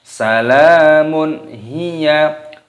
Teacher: dhammah tanwin bertemu dengan ha, dibaca idhar halqi, dibaca jelas.